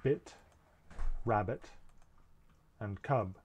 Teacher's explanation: This sound is voiced, that is, there's vibration in the voice box, and otherwise it's like P. It's a stop, and it's made at the lips. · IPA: /p b m f v w θ ð/